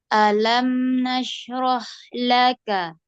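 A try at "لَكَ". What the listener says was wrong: Laka. La. Jangan la. Tapi la. Jangan jangan terlalu menarik bibir ke samping, jangan tapi la. La. La fatahnya Yorna terasa nggak ada kayak agak dialirkan di awal itu, terasa nggak? Mengalir nggak dia di situ? Seharusnya.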